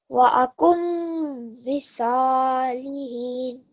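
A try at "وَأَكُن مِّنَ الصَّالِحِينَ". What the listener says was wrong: I think the noon is getting missed. So yes, put the stress on the meme, but don't forget to join this noon with the sad. Akum minas salihin.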